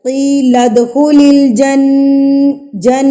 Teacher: نون کی آواز کو ناک میں لے جائیں، اس کو غنہ کہتے ہیں